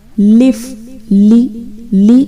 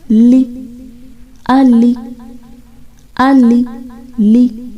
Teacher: جب آپ بولتے ہیں تو دیکھیں زبان اوپر کے دانتوں کے مسوڑوں سے لگ رہی ہے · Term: لام